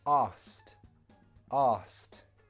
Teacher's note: in a sentence, we would remove the k sound.